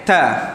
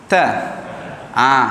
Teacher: Makhraj hujung lidah letak di gusi atas. Di gusi atas hampir pada gigi ya. Kita tekankan dia, ta, bukakan, ta.